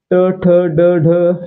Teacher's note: मग या ठिकाणी पहा, न काय आहे? नचा उच्चार करताना आपली जीभ आहे ते आपल्या टाळूला स्पर्श करते, त्याला काय म्हणायचं? मूर्धन्य म्हणायचं